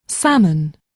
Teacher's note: And there's no L, is there? So, they're not going to say the L.